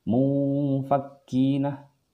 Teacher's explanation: Jadi cara bacanya itu agak ditahan, agak didengungkan. Jadi tidak seperti ini, mufakkina, tapi agak ditahan sedikit saja. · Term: ikhfa